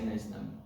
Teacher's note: this ne gets stressed, and then it sounds like one word.